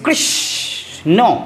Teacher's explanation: নটা আমরা অতটা জোর দিলাম না কিন্তু কৃষটা এইযে একটা দলে আমি জোর দিয়ে দিলাম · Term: শাসাঘাত